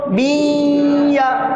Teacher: دو زیر کی تنوین کی آواز یا میں مل رہی ہے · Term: ادغام